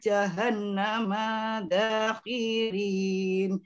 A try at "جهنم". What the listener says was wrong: Manya pendek, jahannama